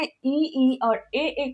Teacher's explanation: तो अग्र भाग में इ ई और ए ए का उच्चारण होता है।